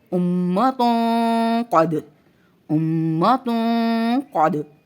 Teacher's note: 2 پیش کی تنوین کے بعد قاف آ رہا ہے جو کہ حروف مستعلیہ میں سے ہے، تو یہاں پر موٹا غنہ ہوگا. ٹھیک ہے، اور جو میم شد ہے اس پر لازم لازم غنہ ہم نے کرنا ہے.